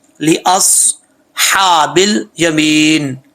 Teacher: اصحابل بل یمین، بل بل نہیں پڑھنا، بل یمین. یہاں پہ یا ساکن سے پہلے زیر ہے یا مدہ ہے، جب وقف کریں گے تو یہاں پر 2.5 الف کی مقدار بھی آپ لمبا کر سکتے ہیں، اور اگر 1 الف کی مقدار کرنا چاہتے ہیں تب بھی ٹھیک ہے، کوئی پرابلم نہیں ہے.